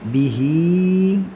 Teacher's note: Ketika ha ini bertemu dengan alif maka dia menjadi mad silah tawilah, panjang 4 harakat. Ada yang menyebutkan sampai 6 harakat, ya.